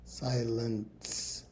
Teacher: that middle vowel, the e represents a schwah vowel sound there. Kind of an unstressed ewah.